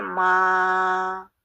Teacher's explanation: تو جو ماں میں ہم نون کو بول رہے ہیں وہ اخفا کر رہے ہیں، وہ کلیئر نون نہیں ہے